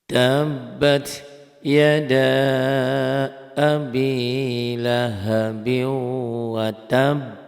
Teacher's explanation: Tabat tuh nyamber B-nya jadi B-nya ada 2 ya